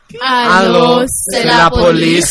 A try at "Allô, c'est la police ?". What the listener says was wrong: Make that a question.